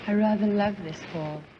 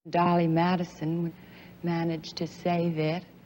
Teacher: the way she spoke was different in her breathy voice